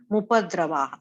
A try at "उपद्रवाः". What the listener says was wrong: I think நீங்க வந்து அந்த பான்னு சொன்னீங்க பா கிடையாது.